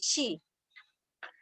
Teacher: Terus sama juga dengan palatalisasi itu bukan hanya di dan tiet ya, tetapi ada juga siot. Jadi ketika siot itu bertemu dengan i atau wi, dia menjadi menebal, menjadi shi. Nah, siot yang biasanya itu juga sama letaknya di cigyong, tetapi shi itu dia agak di kebelakang di sini.